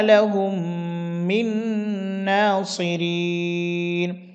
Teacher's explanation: মিম সাকিনের পরে মিম আসছে এটি মিম সাকিনের ইদগাম